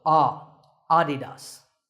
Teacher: the correct pronunciation is with the stress on the first syllable